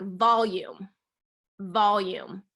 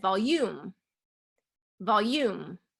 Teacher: we're emphasizing the first syllable in volume okay versus if i said volume volume then that's second syllable stress